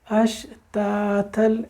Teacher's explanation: یہ تا باریک والے تا ہے، 2 نقطوں والا تا، بہت باریک لائٹ پڑا جاتا ہے